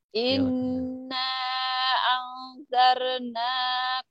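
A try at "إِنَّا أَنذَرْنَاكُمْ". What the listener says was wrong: Jangan angzar ya, jangan angzar, angzar. Ada angzar, jangan anjar. Ini zal ya, bukan zai. Angzar. Angzar, jangan anzar, angzar, angzar.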